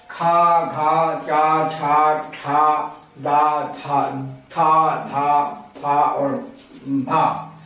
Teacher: महाप्राण में वायु की मात्रा अधिक होती है और हा आकार की ध्वनि ज्यादा होती है, आकार की ध्वनि निकलती है, इसीलिए ये महाप्राण वर्ण कहलाते हैं।